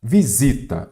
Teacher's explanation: aqui a sílaba tônica é a penúltima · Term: paroxítona